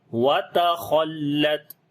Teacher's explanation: تا کو باریک پڑھیں گے، خا کو موٹا پڑھیں گے اور لام کے اور تا کے اوپر صفت شدت اور ہمس پھر آ جائے گی۔